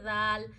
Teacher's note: ذال نرم پڑھیں، آپ اپنی زبان کی نوک کے اوپر کا حصہ، زبان کا سرا اوپر کے دانتوں کے اندرونی کناروں پہ اینڈ کی طرف جہاں وہ ختم ہو رہے ہیں نا، جو نوکیں ہیں اندر کی طرف، وہاں زبان کا سرا ٹچ کریے اور ذال پڑھیے، ذال نرم پڑھیے، ذال.